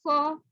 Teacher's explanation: موٹا والا حرف ہے تو اس کو زبان کی جڑ اوپر کو لگے گی تو موٹا پڑا جائے گا، اٹھے گی تھوڑی سی.